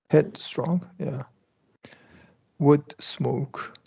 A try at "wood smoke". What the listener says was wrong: Remember, you want to also stop the head, strong, wood, smoke. So you don't want to, you released it there in wood smoke.